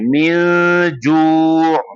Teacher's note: بالکل round lips ہوتا ہے، ہونٹوں کو گول کر کے